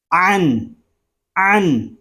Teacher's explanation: عین حلق کے درمیان والے حصے سے ادا ہوگا، اور جب ہم عین کو ادا کریں گے تو حلق ہمارا تھوڑا سا گھومے گا